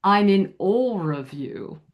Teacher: Actually, you would put an intrusive R and say I'm in all of you.